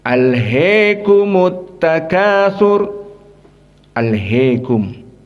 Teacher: Al-Kisai, Hamzah Az-Zayyat, dan juga Khalaf Al-Ashir membaca dengan Al-Imalah Al-Kubra